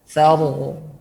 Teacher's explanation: Jadi ujung lidah nempel kepada gusi. Saru. Kemudian jangan ada e-nya ya. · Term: huruf ra